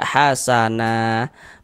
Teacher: mad iwat itu panjangnya dua harakat · Ini kalau kita berhenti di huruf nun, kita baca hasana menjadi mad iwad. Nah, mad iwad itu panjangnya 2 harokat.